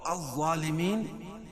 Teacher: الظالمین کہ ظا کو پر پڑھیں گے، کیوں؟ ظا حروف مستعلیہ میں سے ہے.